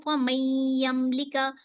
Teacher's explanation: میں نون کو یا میں 2 سیکنڈ کے لیے رک رہی ہوں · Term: ادغام ما الغنہ